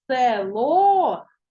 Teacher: наголос падає на о тому е наближена до и